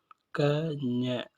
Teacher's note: க, ஞ ஆகியவற்றை கடைநாக்கு மற்றும் கடை அன்னத்தை தொட்டு உச்சரிப்பதால் இவற்றை கடன்ன ஒலிகள் என்பர்.